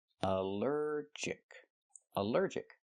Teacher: Allergic is three syllables, allergic. The stress is on the second syllable.